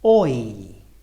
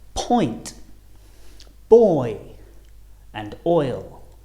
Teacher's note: They're on different rows again, but the shape of our lips and the position of our tongue also change a lot because we're going from the right all the way to the left. Going from rounded lips to unrounded, starting on the O and finishing on the I or E.